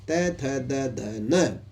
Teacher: तू वर्ग का मतलब है ये 5 अक्षर त, थ, द, ध, न, पांचों के पांचों अक्षर दंत से बोले जाते हैं।